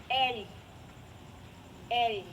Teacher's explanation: quando a gente fala o l fica atrás dos dentes na parte superior